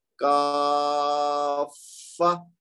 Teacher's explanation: فا کو زور دے کے پڑھا ہے کیونکہ اس کے اوپر تشدید ہے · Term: مسکل